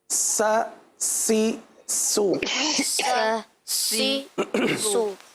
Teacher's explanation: जबान का सिरा और ऊपर के दांतों के अंदरूनी किनारे से